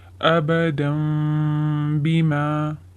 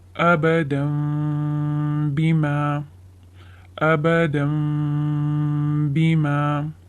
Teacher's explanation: I'm converting the tanween into letter meme, and then I'm slightly touching my lips, and then I'm doing ghunna. These are the 3 steps which shall be followed in the rule of iqlab. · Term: إقلاب